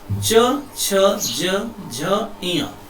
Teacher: ये तालु को स्पर्श करती है। तालु बिल्कुल ऊपर होता है।